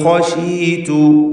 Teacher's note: ഖശീതു ഖാഇന് മാത്രം തഫ്ഖീം കൊടുക്കുക, ഇസ്തിഅലാൻ്റെ ഹർഫാണ്